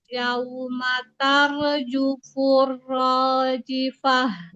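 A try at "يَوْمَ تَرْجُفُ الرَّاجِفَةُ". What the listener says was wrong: Yaumatar jufurrojifah. Boleh dorong lagi suaranya hanya jifah. didorong lagi.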